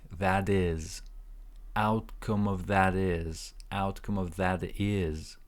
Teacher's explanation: the outcome of that is okay that's a very long linking so T when you connect it with is um sounds like a d